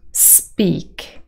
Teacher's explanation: a syllable which is also a word with a nucleus of only a single vowel sound a monophthong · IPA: /spi:k/